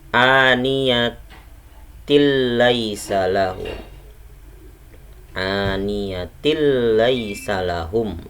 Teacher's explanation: Ada tanwin bertemu dengan huruf bila gunnah, yaitu ada 2 huruf bila gunnah, lam atau ro. Jadi bacanya harus diidghamkan tapi tidak digunnahkan. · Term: idgham bila gunnah